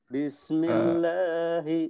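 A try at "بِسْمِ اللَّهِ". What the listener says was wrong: Nah, kepanjangan sedikit lagi. Bismillahi.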